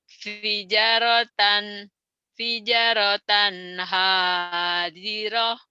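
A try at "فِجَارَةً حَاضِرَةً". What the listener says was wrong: Salah, janya panjang. Bukan kurang panjang, belum panjang. Belum panjang Ibu bacanya. Kurang panjang aja. Kan tadi latihan latihan panjang pendeknya udah ya.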